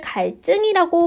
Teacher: 앞에 있는 리을의 영향을 받아서 뒤에 있는 지읒이 쌍지읒으로 바뀌었습니다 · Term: 된소리되기